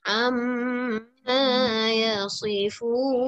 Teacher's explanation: untuk yang fun ni sebenarnya para pendengar sekalian, dia boleh baca panjang 2, 4, 6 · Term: mad arid sukun